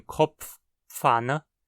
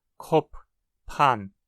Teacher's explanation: Enquanto o alemão tem um característico som de p͡fa, como em Kopf, Pfanne, em hunsriqueano isso é apenas um pʰa